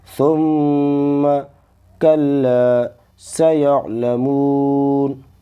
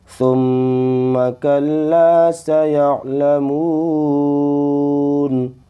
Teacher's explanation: ثم ایک الف کے برابر غنہ کریں گے اس کے اندر، کیونکہ میم اور نون پر جب تشدید ہوتی ہے تو ہم اس کو غنہ کر کے پڑھتے ہیں